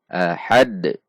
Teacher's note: Dan karena di akhir kalimat, maka pantulannya besar atau kubro atau qalqalah kubro. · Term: qolqolah kubro